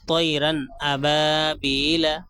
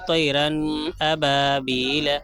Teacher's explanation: طیرن ابابیل، اب اگر اسی کو کوئی پڑھا طیرن ابابیل تو یہ بالکل سراسر غلط ہو جائے گا، کیونکہ تنوین کے بعد حمزہ ہے اور حروف حلقی میں سے حمزہ آیا ہے، اور حمزہ جہاں پہ حروف حلقی آ جائیں تنوین کے بعد تو خوب ظاہر کر کے پڑھیں گے، آواز کو ناک میں نہیں لے کر جائیں گے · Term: اظہار